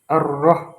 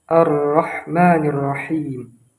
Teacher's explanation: Ra ini termasuk ke dalam huruf tebal. Nah, dengan pengucapan yang tebal, kita tidak menggunakan vokal O, ar-rah, maka disitulah kesalahannya. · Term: vokal A